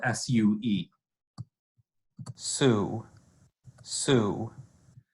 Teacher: if we just listen to the fricative portions its voiceless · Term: alveolar fricative